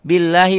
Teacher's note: bi-nya lafaz Allahnya tipis, tarkik.